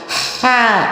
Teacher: حلق کے درمیان والے حصے سے ہا ادا ہوگا. ہا، بھلے آپ یہاں پر اپنا انگوٹھا یا انگلی پریس کیجئے، ہلکا سا، زیادہ نہیں دبائیے گا، ہلکی سی پریس کیجئے اور ایسے پراپر ہا نکالنے کی کوشش کیجئے.